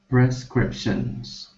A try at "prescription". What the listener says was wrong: Or, sorry, that's singular prescription.